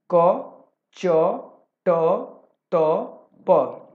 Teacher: क को हम कंठ से उच्चारण करते हैं, च को तालव्य से, तालु से, ठीक है, ट को मूर्धा से, ठीक, त को दंत से, ठीक है, और प को ओष्ठ से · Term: उच्चारण स्थान